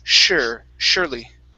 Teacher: the s at the beginning is going to be an sh sound instead